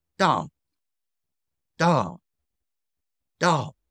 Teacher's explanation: Imagine it is going from level three straight down to level one. It is a falling tone. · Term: fourth tone